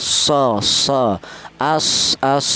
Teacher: huruf shad itu keluarnya huruf dari ujung lidah menyentuh pangkal gigi seri bawah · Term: sifat shofir